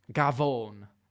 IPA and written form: ɡaˈvɔːn (booty)